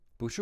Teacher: when it's followed by another character that's also a falling tone then the boo becomes a rising tone